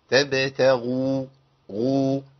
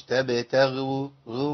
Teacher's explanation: الغين هنا مضمومه يعني في مرتبه قويه من التفخيم